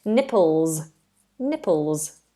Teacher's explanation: it's a zed sound not an S sound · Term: Z sound